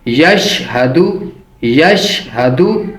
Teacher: یشہدو یشہدو اور شین کو تھوڑا سختی کے ساتھ پڑھیں گے. ہا کو موٹا کر کے پر کر کے پڑھیں گے. اس کا مخرج ہے سینے سے، یعنی کہ حلق کا آخری حصہ جو سینے کی طرف والا ہے.